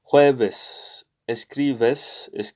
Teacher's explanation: in the middle of words or sentences they often sound like a hybrid between b and v